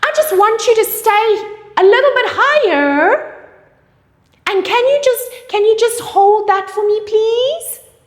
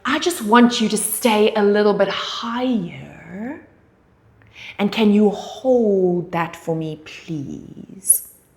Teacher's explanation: your falling intonation brings authority over to your client